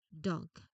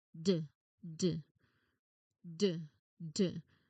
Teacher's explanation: So, when you say the D consonant I want you to feel that same tongue tip seal but add a humming or buzzing vibration from your vocal cords the moment your tongue touches the ridge · So, you should feel a clear very clear deep bass. There is buzzing. There is vibration. So, it is a voiced sound.